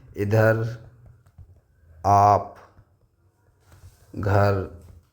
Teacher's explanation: निरनुनासिक होते हैं केवल मुंह से बोले जाने वाले।